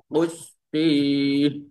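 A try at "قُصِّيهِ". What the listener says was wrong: Tinggal sod ya. Usi. Nah, itu masih kesin ya. Nah, berarti huruf sod. Sisanya sudah baik Pak, tinggal di huruf sod berarti ya, dipertebal lagi.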